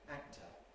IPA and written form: ˈæk̚tə (actor)